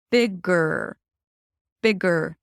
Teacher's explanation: And you want to round the lips. So, at the end of the word bigger, you shift from the G sound to the R directly